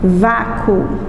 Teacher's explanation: quando eu pronuncio a palavra vácuo, o U ele some. Então é semivogal mais vogal.